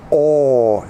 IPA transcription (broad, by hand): ɔː